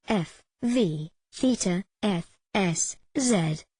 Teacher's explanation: involves almost blocking the Air Stream and having the air push through the very narrow opening as the air is pushed through and a type of friction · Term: fricatives